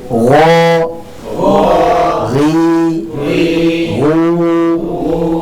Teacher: Dan Gain ini memiliki sifat rakhwah jadi dari segi aliran suara dia mengalir Jangan sampai kita potong hadiran suara tersebut sehingga malah menjadi huruf